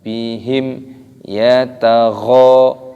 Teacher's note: ada mim sukun bertemu dengan huruf ya, ini hukumnya dibaca idhar syafawi, jadi tidak boleh didengungkan.